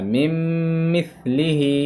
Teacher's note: نون کو میم سے بدل دیا جا رہا ہے، نون کو نہ پڑھ کر نون کی جگہ میم کو پڑھا جا رہا ہے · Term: ادغام